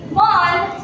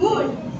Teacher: the Middle English long O to long U